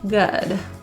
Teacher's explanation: The word good is an upsilon sound, meaning our relaxed, open lip, kind of protruded lip position. Rather than ooh.